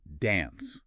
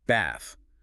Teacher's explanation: British bath with a broad a American bath with a shorter a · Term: broad a versus short a